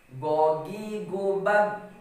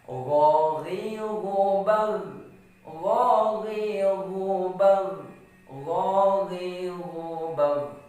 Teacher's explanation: ketika kita menyebut huruf gha, nggak boleh dia langsung terdiam dan juga tidak boleh memantulkannya. Jadi sifat dari huruf gha itu fleksibel.